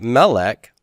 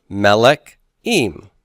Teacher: the word melech with its first syllable stress and add em to the end like this Melik em now